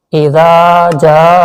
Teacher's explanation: زال کو نرمی سے اور تھوڑا سا کھینچ کے پڑھیں گے کیونکہ الف سے پہلے زبر ہے، حرف مدہ ہے، تو الف سے پہلے زبر ہو تو وہاں پر تھوڑا سا کھینچ کر پڑھا جاتا ہے، اور زال کو نرمی سے بھی ادا کرنا ہے۔